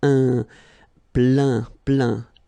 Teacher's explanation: Remember this E-I-N nasal. So it goes in your nose